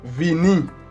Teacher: Travail, Oui, V, O B corta, como diríamos en Chile, es un sonido labiodental. Esto quiere decir que los dientes superiores contactan los labios inferiores, como en la letra F, a diferencia de la P, en donde ambos labios se tocan.